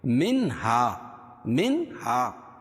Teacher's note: الف سے پہلے زبر ہو تو الف مدہ، اس کو ایک الف کے برابر کھینچ کے پڑھیں گے۔